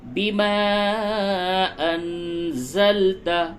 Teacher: نون ساکن کے بعد زال ہے، اخفا کیجئے